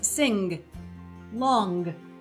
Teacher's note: Now, it's important to recognize what the sound is just by itself. There are some dialects in the United States who will add a sort of shadow /g/ a little sound to the end of it